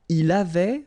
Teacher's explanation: Il avait, final T not pronounced.